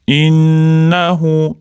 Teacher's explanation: O'rtadiga alif o'qilmagani undan keyingi harfda sukun bilan boshlangani uchun vas deb urushtirib yuboramiz. Innahu nun tashdidlik kelganligi uchun g'unnas bor ushlab turamiz · nun tashdidli kelganligi uchun g'unnas bor, ushlab turamiz.